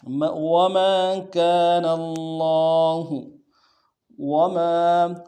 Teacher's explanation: وما كان اللہ، وما، واو کو نون سے ادا کریں گے، میم کے ساتھ الف مدہ ایک مقدار میں کھینچیں گے